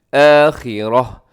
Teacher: اور فی الآخراتی میں تا کو وقف میں کیا کریں گے، تا کو وقف میں ہم ہا سے چینج کر دیں گے